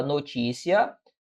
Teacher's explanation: notícia é uma paroxítona paroxítona ou seja a sílaba tônica recai sobre a penúltima sílaba